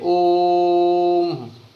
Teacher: ओ को तिगुने समय में आप बोलिए ओम, इस तरह से बोला जाए। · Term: प्लुत स्वर